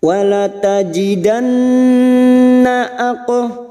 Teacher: nun yang bertasdid gunnah musyaddadah, kita dengungkan selama 3 harokat